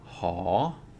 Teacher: live syllable, high consonant, that makes it a rising tone